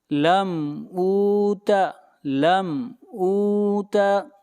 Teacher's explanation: میم کو ظاہر کر کے پڑھیں گے، یہاں پر اظہار ہوگا